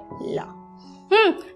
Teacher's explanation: जो जीभ है ऊपर उठती है, हवा बाधित पूरी तरह से होती तो नहीं है, मतलब दोनों किनारों से होकर हवा कुछ क्षण के बाद निकल जाती है और ये ध्वनि उच्चारित होती है। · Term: पार्श्विक ध्वनि